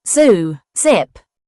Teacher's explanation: Zed is the voiced buzzing sound made with tongue near the roof of the mouth. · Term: zed sound